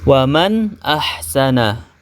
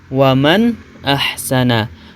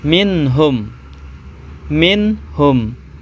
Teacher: cara membaca nun sukun atau tanwin yang demikian itu harus terang jelas dan pendek bunyi suaranya tetap jelas tidak samar dan tidak mendengung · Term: izhar halqi